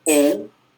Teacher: eu tenho o, que é a vogal, e o U, que é a semivogal, que é pronunciado com menos intensidade, né? É uma semivogal, então é esse fonema átono, esse fonema mais fraquinho.